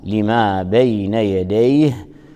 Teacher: جاء منونا التنوين النون الساكنة نون التنوين اللفظية تدغم بحرف اللام فنقول مصدقا لما بين يديه. لما الميم مرققة وترقق الألف بعدها فلا نقول لما، وإنما نقول لما بين يديه.